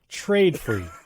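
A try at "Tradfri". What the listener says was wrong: I don't say like the hard A. It's like Trod Free is usually how I say it.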